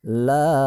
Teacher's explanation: Nah, la dibaca 5 ketukan sama dengan atas. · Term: mad jaiz munfasil